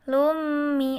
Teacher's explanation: ada dhammah tanwin bertemu dengan huruf mim, maka dibaca tasydid dan mendengung atau memasukkan dengan dengung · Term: idgham bi gunnah